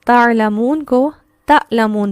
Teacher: جب ہم عین نہیں نکالتے تو ہم وہاں حمزہ کی ساؤنڈ نکالتے ہیں